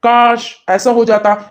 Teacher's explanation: यानी काश पे जोर दिया गया